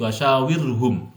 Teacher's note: Kalau ada ro sukun sebelumnya harokatnya kasroh, ini tarkik dibaca tipis